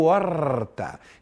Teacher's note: fala-se normalmente com o R retroflexo. O R caipira para alguns, mas é aquele R que fica um pouco mais arrastado